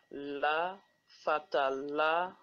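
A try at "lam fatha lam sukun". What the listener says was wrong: Do not say la. Do not say la. Just say lam fatha lam sukoon lal.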